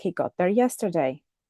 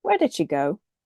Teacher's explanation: The fall pattern, for example, is found in statements like he got there yesterday, or WH question seeking information.